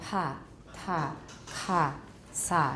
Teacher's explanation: Vocal folds apart during the release of an articulation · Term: aspirated